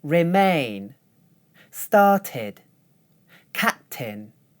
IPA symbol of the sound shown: ɪ